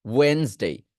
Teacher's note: Just ডি এর উচ্চারণ আমরা করব না।